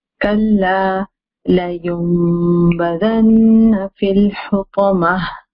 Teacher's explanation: There is a noon sakina, and after there is a ba. So instead of saying la yun bazanna, I'm not saying la yun bazanna, I'm saying la yum, and I'm doing gunna.